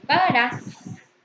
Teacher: Pagarás. Tiene acento prosódico en su última sílaba.